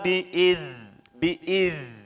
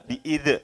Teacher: za ini memiliki sifat hamas. Jadi ada aliran napas. Cirinya membedakan huruf yang hamas atau yang mengalirkan napas ini, telapak tangan kita ditaruh di depan mulut kita, akan terasa.